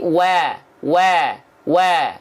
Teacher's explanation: bunyinya jangan condong ke e tapi ke a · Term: harakat fathah